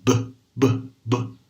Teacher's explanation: as cordas vocais vão vibrar. Então, é um som sonoro, tá? Um som voiced.